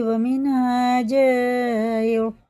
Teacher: یہ مد متصل ہے، 4 الف کے برابر کھینچ کے پڑھیں گے، لیکن یہاں الف بھی مدہ ہے تو 5 کے برابر اسے کھینچ کے پڑھیں گے.